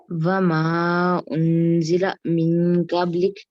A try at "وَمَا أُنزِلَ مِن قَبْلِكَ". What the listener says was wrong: شاباش، اگلا بھی پڑھ دو،